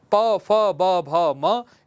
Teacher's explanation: प, फ, ब, भ, म, इनका उच्चारण स्थान है ओष्ठ।